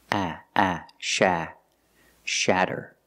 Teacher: To make the sound A, put the tongue down in the front behind your teeth and then up in the back. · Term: short A sound